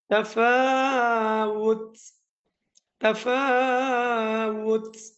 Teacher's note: তার মধ্যে থামলে সাকিন হবে এবং পড়ার সময় একটু বাতাস বাহির হবে।